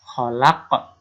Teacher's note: akhir dari ayat kedua itu ada huruf qalqalah. Maka ini juga dibaca dengan qalqalah kubro.